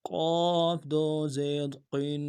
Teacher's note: ایک الف کی مداد میں غنے کو کھینچنا ہے، تنوین میں جو غنہ ہے اس کو، اور پھر قاف کو موٹا پڑھنا ہے۔